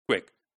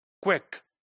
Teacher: You see, in word quick, right? The W starts when the k sound is not yet finished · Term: co-articulation